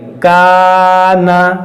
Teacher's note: یہاں پر غور کیجئے الف سے پہلے باریک حرف ہے, کاف, یہ کاف باریک پڑھا جاتا ہے, چھوٹا کاف ہے, تو اس الف کو بھی باریک کریں گے